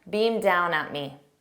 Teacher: because down begins with a D, I don't pronounce it because if I pronounce beam down together, that D will be for both of them. And I take that N sound and I transfer it to smooth those out.